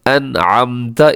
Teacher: اگر نون ساکن اور تنوین کے بعد ان 6 حروف میں سے کوئی بھی حرف آ جائے تو وہاں پر اظہار حلقی ہوتا ہے، اور اظہار حلقی سے کا مطلب یہ ہوتا ہے کہ آپ نے یہاں پر غنہ نہیں کرنا، آواز کو ناک میں نہیں لے کے جانا، اگرچہ یہاں پہ نون لکھا ہوا ہے لیکن آپ نے اس کو تیزی سے پڑھ دینا ہے۔